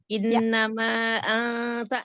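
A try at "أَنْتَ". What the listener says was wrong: Iya, nun sukun ketemu ta, ikhfa. Anta, jangan ang, anta dari depan, karena ta kan makhrajnya dekat dari nun, ta, ya, maka dari depan ikhfanya. Anta, iya, jangan angta, ya, ikhfa itu hukumnya ikhfa, nun sukun ketemu ta, ya.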